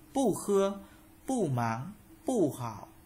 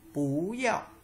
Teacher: Pu bình thường đọc là pu, pu được đọc là pú khi từ kế tiếp kết thúc bằng dấu, dấu huyền